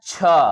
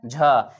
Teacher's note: दूसरा कौन सा है छ और चौथा कौन सा है झ इन दोनों का क्या होगा महाप्राण होगा